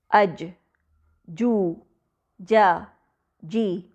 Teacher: जीम की अदायगी के वक्त जबान का दरमियानी हिस्सा तालू से मुकम्मल तौर पर लग जाता है अज जू ज जी जीम में पलटने की आवाज यानी कलकल · جیم کی ادائیگی کے وقت زبان کا درمیانی حصہ تالو سے مکمل طور پر لگ جاتا ہے۔